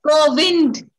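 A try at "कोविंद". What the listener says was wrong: Please don't say COVID, but Kovind.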